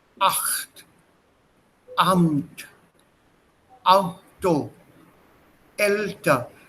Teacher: Just before a vowel, there's a small break, and then the sound comes out. · my vocal cord starts moving even before the ah sound comes out · So this light sound which starts off but is not heard is called a knacklaut. It's a knacklaut that appears in words where you break the words.